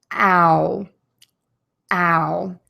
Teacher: So your lips are going to be wide open in a circle. And then they're going to move to rounded lips that are very tense. Ow, ow. And it's going to be a little smoother. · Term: the long ow